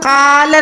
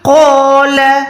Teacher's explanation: قوف کے ساتھ یعنی موٹے حروف کے ساتھ جب بھی الف آتا ہے تو وہ الف بھی موٹا ادا ہوتا ہے